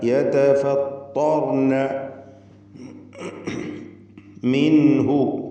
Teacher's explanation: സാക്കിനത്ത നൂനിനെ ഇൽഹാർ ഹൽക്കി നൽകി മണിക്കാതെ വെളിവാക്കേണ്ടതാണ്. മിൻഹു അല്പം പോലും ഗുന്നത്ത് നൽകാതെ.